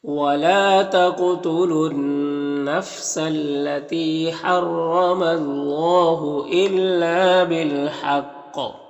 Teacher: الا میں الف مدہ ہے، بالحق میں وقف کریں گے تو زیر سکون سے بدل جائے گا، تو قلقلہ بھی ہوگا اور پر بھی پڑھیں گے